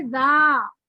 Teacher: जा जो है वो हरफ मद्दा है, 2 हरकत पर खींचा जाएगा